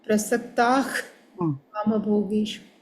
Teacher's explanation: If visarga is followed by kakara, either ka and khakara, then visarga should be pronounced like KH.